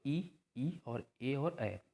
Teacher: जो जीभ का अग्रभाग जो होता है वो कार्य करता है। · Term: अग्रस्वर